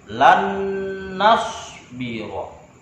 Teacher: nun bertemu dengan nun. Nun yang pertama sukun menjadi satu nun yang bertasydid. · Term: idgham mutamatsilain